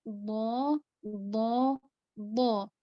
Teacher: Jadi kalau bo itu makhrajnya menyentuh gusi atas.